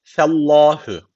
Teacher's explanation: F ince Allah lafzı kalın Allah lafzı niye kalın Çünkü öncesindeki harf üstten bağlanmış Fellah bu